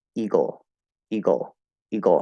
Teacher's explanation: We're going from g, and you can put a schwa, you can put a high schwa, or you can go straight into that half L. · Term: syllabic L